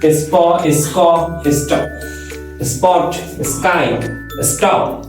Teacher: এস এর পরে পিটিকে থাকলে অ্যাসপিরেটেড হয় না